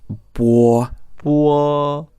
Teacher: it's almost like it's got a U in the middle. It's almost like it's B-U-O.